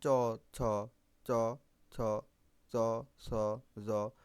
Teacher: ওকে, তো দেখো চ ছ জ ঝ, চ ছ জ, যেগুলো দেখো উচ্চারণ করে দেখো, দেখবা তোমার যে দাঁতের মূল অংশ আছে, দাঁতের মূলের শেষ, দাঁতের মূলের শেষ অংশ এবং জিহ্বার সহযোগে উচ্চারণ হচ্ছে।